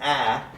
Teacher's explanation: the vowel a is produced with a low tongue position